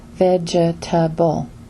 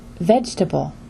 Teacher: For example, the word vegetable is not pronounced with 4 vowels, as vegetable, but vegetable instead. This word has only 3 vowels, or 3 syllables, with stress on the first syllable, and the 2 remaining syllables are just the schwa sound.